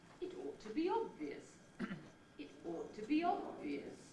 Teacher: The pitch starts low, rises gradually throughout the head. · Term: rising heads